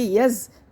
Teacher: یا کو بغیر کھینچے پڑھتے لیکن آگے زا مشدد ہے، یعنی کہ زا کے اوپر تشدید ہے، اس کو مشدد حرف کہتے ہیں۔ یا کو زا سے ملا کر ایک دفعہ پڑھیں گے